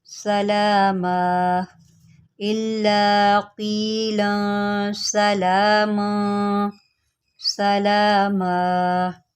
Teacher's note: وقف کی صورت میں دو زبر آیا ہے اور میں نے اس کو الف سے بدل دیا ہے